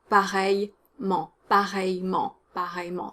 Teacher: The I followed by a double L is pronounced ya typically, and you want to drop the E because it's spoken, so pareillement, pareillement, pareillement, 3 syllables.